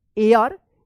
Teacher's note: इसको हेयर मत पढ़िएगा, एयर पढ़ेंगे, एच यहां पे जो है ना साइलेंट रहेगा